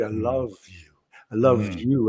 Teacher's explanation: the vowel just disappears it's all l and v